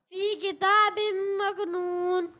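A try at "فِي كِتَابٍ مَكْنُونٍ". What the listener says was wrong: اچھی کوشش کی، لیکن بیٹا مکنون یہاں کلکلا نہیں ہوگا، ٹھیک ہے؟ قاف میں کلکلا کرتے ہیں، کاف میں کلکلا نہیں ہوتا، ٹھیک ہے؟ مکنون نہیں، مکنون پڑھیں. مکنون.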